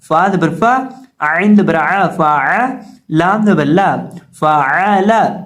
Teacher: फा को हम अदा करेंगे निचले होंठ के दरमियान को सामने वाले ऊपर के 2 दांतों के किनारे से लगाएंगे तो फा अदा होगा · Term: फा का मखरज